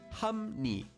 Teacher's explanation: Although it's written as hap li, when we read it, it will become hum ni.